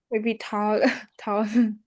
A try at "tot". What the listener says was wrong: you did add ending sound, but it's like touch. This one we only need like tot.